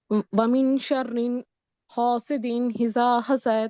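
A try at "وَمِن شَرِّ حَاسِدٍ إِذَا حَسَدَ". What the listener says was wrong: شرری یا شررن کیوں پڑھ رہی ہیں؟ شر،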